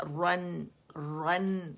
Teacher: را فتحتین رن، آواز ایک کاؤنٹ کے لیے اوپر جائے گی، اور پھر اس میں جو نون چھپا ہے، را موٹا ہے نون باریک ہوگا